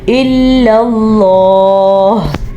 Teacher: لفظ اللہ سے پہلے حرف پہ زبر ہے تو لفظ اللہ کو ہم پر پڑھیں گے